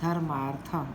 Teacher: दोनों वर्णों को मिलाकर एक सवर्ण अर्थात दीर्घ स्वर हो जाता है। कहने का तात्पर्य यह है कि यदि अ के बाद आ या अ हो, ई के बाद समान स्वर हो, ऊ के बाद भी समान स्वर हो और री के बाद भी समान स्वर हो, वो ह्रस्व हो या दीर्घ हो, अंत में वह दीर्घ हो जाएगा। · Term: दीर्घ संधि